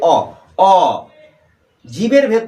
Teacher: জীবটা মুখের কোনো অংশে স্পর্শ করছে না, সেই কারণের জন্য অ হচ্ছে স্বরবর্ণ